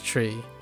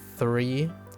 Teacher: Whenever my parents try to go and try to say the th sound, three, it becomes tree.